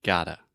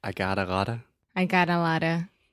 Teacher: your tongue is just touching the top of your mouth really really fast and it's just a quick little tap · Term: flap T